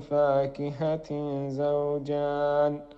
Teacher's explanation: هنا التنوين وبعده الزاي، والزاي من حروف الإخفاء الحقيقي